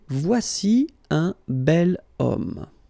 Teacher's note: H is not pronounced, so H doesn't exist phonetically